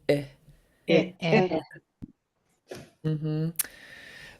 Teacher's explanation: short low I sound